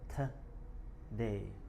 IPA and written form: təˈdeɪ (Today)